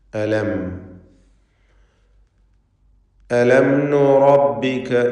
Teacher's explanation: സാക്കിനത്ത മീമിന് ഇൽഹാർ ഷഫവി നൽകി മണിക്കാതെ വെളിവാക്കണം